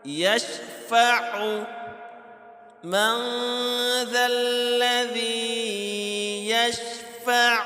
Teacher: من ذا الذی یشفع، اکثر لوگ پڑھتے ہیں یشفع، یعنی کہ عین کو جو ہے وہ صحیح ادا نہیں کر پاتے، تو عین کو اس کے مخارج سے صحیح ادا کرنا ہے، حمزہ ادا نہیں کرنا